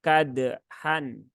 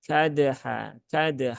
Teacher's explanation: ingat Dal sukun jangan terlalu berlebihan untuk huruf-huruf yang Qalqalah Maka jangan sampai kadhan tapi cukup disentuhkan saja makhrajnya kadha ya